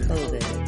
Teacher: The stress in COVID falls on the first syllable, co. It has the clear vowel O and is held longer. COVID. The second syllable has the reduced I vowel and is shorter in duration than the first syllable.